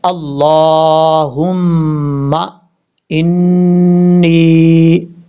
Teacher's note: اب یہاں پر لفظ اللہ کو اوپر پڑھنا ہے، اللہم انی، نون کے اوپر شد غنہ کریں گے، ایک الف کی مقدار